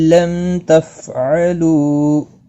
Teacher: میم ساکن کے بعد تا آیا ہے، اظہار شفوی ہوگا۔ تفعلوا، لو واو مدہ ہے، 1 الف کے برابر کھینچ کر پڑھیں گے۔